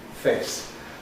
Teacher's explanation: that the /eː/ monophthong became diphthongal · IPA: feɪs